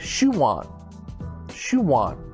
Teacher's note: different word it's two words combined spoke in a natural way sounds like we're adding a w